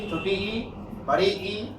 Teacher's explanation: इन स्वरों का उच्चारण करते समय मुख द्वार लगभग बंद रहता है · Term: समृद्ध स्वर